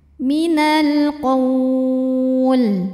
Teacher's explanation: karena alif lam menghadapi huruf qamariyah yaitu qaf, maka lamnya dibaca dengan jelas atau disebut dengan izhar qamari.